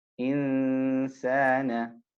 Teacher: at the point between the noon and the sin, we make the sound of ghunna